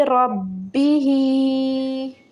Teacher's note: यहाँ पे बा मुशद्दद, दबाव देंगे बा पे